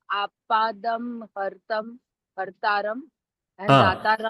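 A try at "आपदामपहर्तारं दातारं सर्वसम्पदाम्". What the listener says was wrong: hartaram is a break. samyukta. You have to break it as apadam apahartaram.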